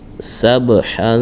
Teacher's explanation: اب یہاں پر با ساکن ہے، اس میں قلقلہ کریں گے